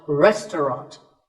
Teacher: The second syllable is just ta, and the third is ront, so restaurant.